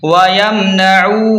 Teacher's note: عین کو حلق سے نکالیں اور واو مدہ کو تھوڑا سا کھینچ کر پڑھیں